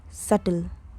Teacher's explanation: The B is completely silent. It is pronounced subtle.